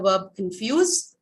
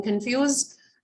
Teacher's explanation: your second syllable fuse is stressed